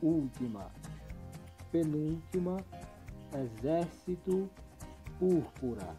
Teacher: a sílaba que é pronunciada com mais intensidade e é a antepenúltima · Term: proparoxítonas